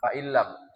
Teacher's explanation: Ah, faillam seharusnya inam ya kan. Tapi karena nun berdekatan dengan huruf lam maka diidgam dia mutaqoribain secara dua huruf hukumnya mutaqoribain. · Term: idgham bila